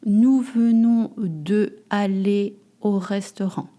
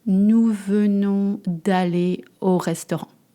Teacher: You notice that I drop the E in front of the vowel.